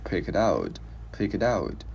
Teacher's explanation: cái chữ T này mình sẽ luyến qua chữ out thành chữ D tiếng Việt